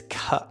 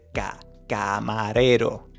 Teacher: in English, you actually let some air out. So, it's ca. In Spanish, we do not have that air coming out. It's completely blocked. So, we say ca.